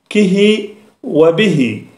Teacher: يعني بهاء وقعت في اخر النطق به ليعتمد عليها اللسان عند النطق اذا ابقيت على حرف واحد لا لا يظهر في النطق به